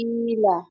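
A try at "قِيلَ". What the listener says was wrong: এই কফ উচ্চারণটা একটু সুন্দর।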